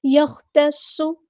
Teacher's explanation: ہمارا heavy letter پورا ادا کریں گے، صاد کی سیری ہم نے واضح کرنی ہے